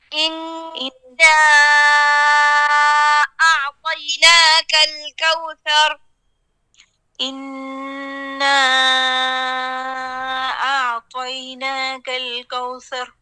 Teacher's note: ہمارے پاس مد واجب ہے، اس میں آپ نے 4 یا 5 انگلیاں کھولنی ہیں